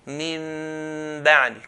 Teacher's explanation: change the Nun into Mim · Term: Qalb